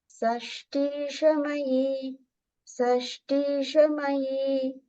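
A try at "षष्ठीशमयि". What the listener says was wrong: It begins with the sh sound, like Rishi or Vishnu. So it's shash, and then tisha, tisha. So that T is a Mahaprana. Shashtishamai.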